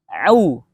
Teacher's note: Huruf ain cara melafadzkannya adalah dengan cara menutup terlebih dahulu katup yang ada di tenggorokan tengah. Lalu ketika ingin bersuara, buka katupnya. Jadi tutup dulu, baru buka.